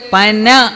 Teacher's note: പനയിലെ ന ഉച്ചരിക്കുന്നത് നാക്ക് ഊനിൽ തൊടണം എന്നാണ് പറഞ്ഞത് നാവ് ഊനിൽ തൊട്ടുകൊണ്ട് പന എന്ന് പറയുന്നു ഒരേ അക്ഷരം തന്നെ രണ്ടു രീതിയിലാണ്